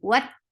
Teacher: Ta, what, for wow, join the edges of your lips and give a nice big hole in between the lips. What, ta is very shadid harf, so the sound should be pronounced and cut off right away.